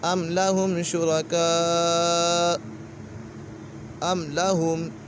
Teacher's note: میم سکن کے بعد حرف با اور میم کے علاوہ کوئی بھی حرف آ جائے تو میم سکن میں اظہار شفوی ہوگا، یعنی غنہ نہیں کریں گے، یہاں پر غنہ نہیں ہوگا۔